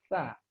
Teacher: makhrajnya dengan menyentuhkan ujung lidah kita dengan dinding dua gigi seri bagian atas. Sa. Ya, jadi kita ucapkan ujung lidah kita menyentuh dua gigi seri bagian atas. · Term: huruf sa